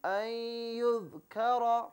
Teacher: اس میں کاف کو باریک پڑھنا ہے، را کو موٹا کر کے پڑھنا ہے